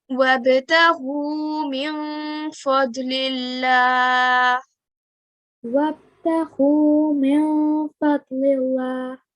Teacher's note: So we need to do 2 seconds nasal sound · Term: ikhfa